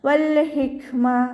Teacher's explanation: കാഫിന് സുക്കൂനആണ് അപ്പോ നമ്മൾ കുറച്ച് എയർ പാസ്സ് ചെയ്യുന്ന സൗണ്ട് കൊടുക്കുട്ടോ · ഹ സൗണ്ട് വരുന്നത് മഹ്റജ് വരുന്നത് നമ്മുടെ തൊണ്ടയുടെ മധ്യഭാഗമാണ് സൗണ്ടിന് ഹിന്റെ സൗണ്ട് ആയി പോകാതെ ഹ എന്നുള്ള സൗണ്ട് തന്നെ കൊടുക്കാം ശ്രദ്ധിക്കു